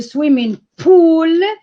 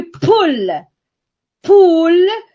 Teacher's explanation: the first is long and the second is short